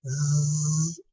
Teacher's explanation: Este sonido z es uno de los más vibrados en inglés. Y este sonido tal vez te recuerde a un insecto.